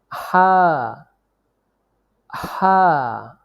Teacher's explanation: হা কণ্ঠনালীর মধ্যখান হইতে উচ্চারিত হয়